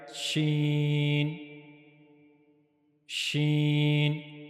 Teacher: when the middle of the tongue connects to the roof of the mouth, then we'll pronounce sheen correctly